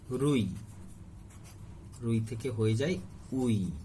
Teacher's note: রুইকে অনেক সময় অনেক অঞ্চলে উই উচ্চারণ করে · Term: আদি ব্যঞ্জন লোপ